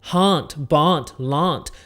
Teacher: So the last sound change that I want to give you is with the D sound, and it happens when the D comes at the end of a word. So for a word like hand or band or land, you would change it to a T sound.